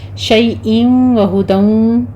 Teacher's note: آگے تنوین کا قاعدہ ادغام بلا غنہ ہے۔ شیئن وہدن، دونوں جگہوں پہ ادغام علی غنہ ہو رہا ہے، 2 کاؤنٹ کریں گے